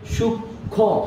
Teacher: এখন কথা হচ্ছে ক্ষীয় এর উচ্চারণটা এখানে কি হচ্ছে, যদিও ক্ষীয়র মধ্যে বর্ণ আছে হচ্ছে ক এবং স, কিন্তু আমরা উচ্চারণ করছি সেটাকে সূক্ষ্ম, অর্থাৎ উচ্চারণটা খেয়াল করবে যে একবার ক একবার খ উচ্চারণ হয়েছে